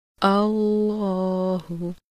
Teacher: لفظ اللہ کے دونوں لام موٹے پڑھے جاتے ہیں